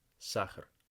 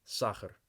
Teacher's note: and in this case there are two vowels in Saha but the second one is unstressed meaning it is reduced to something along the lines of an ER in English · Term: unstressed vowel is reduced